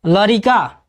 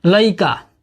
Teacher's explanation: भोजपुरी की पांचवी विशेषता है, भोजपुरी में शब्दों के मध्यवर्ती र का लोप हो जाता है